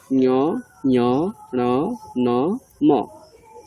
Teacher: যে পঞ্চম বর্ণগুলো রয়েছে ঞ, ঞ, ণ, ন, ম, এদের নাম দেব আমরা অনুনাসিক।